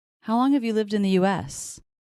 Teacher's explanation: I'm hearing how is being pretty stressed